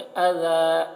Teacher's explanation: यहाँ पर वक्फ करेंगे तो इसे अज़ा पढ़ेंगे, अज़ा, या को नहीं पढ़ेंगे